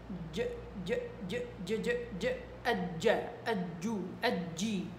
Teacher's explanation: في إلها شوية هواء خفيف جدا ما بينسمع، ولكن بيخفف صوتها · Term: الجيم